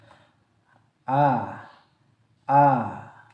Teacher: makhrajnya huruf hamzah itu berada di tenggorokan bagian dalam, bagian bawah ya.